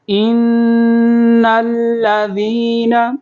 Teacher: نون کو لام کے ساتھ ملائیں گے اور لام کو واضح آواز میں پڑھیں گے